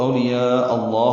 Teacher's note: آنے کی وجہ سے مد متصل، یہ مد واجب ہے، اولیاء، اس حمزہ کو لفظ اللہ کے لام سے ملانا ہے کیونکہ اس کا حمزہ عارضی ہوتا ہے